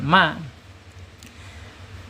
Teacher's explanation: Mim secara makhraj ada di asyafatain ya. Asyafatain yaitu ee dua bibir ya.